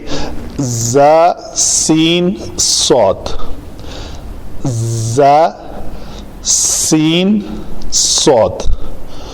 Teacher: سین کا مخرج جب دونوں دانت آپس میں جڑتے ہیں اور پیچھے سے زبان آ کے ٹچ ہوتی ہے تو اس کو کہتے ہیں، یہ اس کا مخرج ہے. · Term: حروف صفیریہ